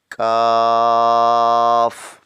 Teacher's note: کاف جو ہے اس کو سخت تالو میں سے ادا کریں گے